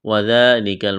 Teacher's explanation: واو کو جلدی پڑھنا ہے، دال کو ایک الف کے برابر کھینچنا ہے، دال کو نرم کرنا ہے، کاف کو باریک کرنا ہے